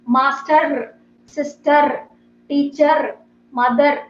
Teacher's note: R ending words like sister, teacher, mother, master, all these words, you should not pronounce this R.